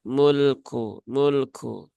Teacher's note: lam sukun itu sifatnya tawasut ya Maka jangan dibaca dengan ee ee dihentakkan